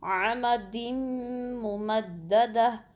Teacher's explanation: تنوین کے بعد یرملون میں سے لیٹر میم آیا ہے تو دال کو میم سے ملائیں گے عمد ممددہ، تو اس کو ملا کے پڑھیں گے تو یہاں بھی ادغام ہو رہا ہے۔